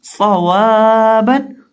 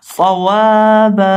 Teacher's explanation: با دو زبر بن صوابن. صاد کو یہاں ہم موٹا کر کے بھی پڑھیں گے اور اس کے اندر ہم سیٹی کی آواز بھی پیدا کریں گے. اور جب اس لفظ پہ وقف کریں گے تو وقف کرتے وقت ایک زبر کو گرا دیں گے, ایک زبر اور الف باقی رہ جائے گا.